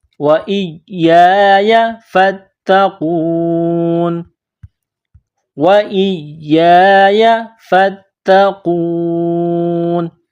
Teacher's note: جب اس آیت پر سٹاپ کریں گے، وقف کریں گے تو نون کو سائلنٹ کریں گے